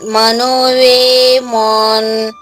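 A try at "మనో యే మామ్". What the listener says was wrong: వే కాదండి, ఏ ఏ మనో ఏ మాన్. మనో ఏ మాన్. వే కాదమ్మా, ఏ ఏ ఏ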